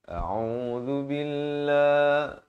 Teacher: Hamzah di pangkal kerongkong, ain di pertengahan kerongkong. Zal di hujung lidah. · Lafz jalalah dibaca nipis 2 harakat